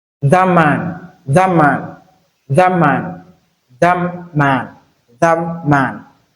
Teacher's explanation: So you cannot realize the T sound here because T you place your tongue at the tooth rate inside your mouth. But the next sound which is M is a bilabial sound which you have to use your two lips to articulate it. So the next sound affects the last sound in the first word. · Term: manner assimilation